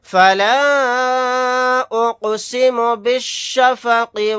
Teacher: یہاں پر الف مدہ کے بعد حمزہ دوسرے کلیمے میں ہے تو یہاں پر مد منفصل کا قاعدہ ہوگا